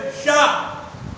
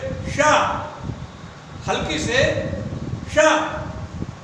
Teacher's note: अब हम जब शा का उच्चारण करते हैं तो हमारी जिह्वा सीटी के आकार में से मुंह से हमारे सीटी की ध्वनि निकलती है शा, हल्की से शा, इसको तालव्य कहा गया।